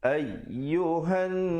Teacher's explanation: Ayyuhan, ay ditekankan di situ, diberikan stres di situ, di atas ya itu, dan dibacakan ayyuhan, didengungkan di atas nun yang bersabdu 2 harakat